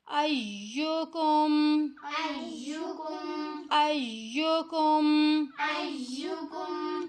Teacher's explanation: الف کو یا کے ساتھ ذرا مضبوطی کے ساتھ ملانا ہے کیونکہ یا کے اوپر تشدید ہے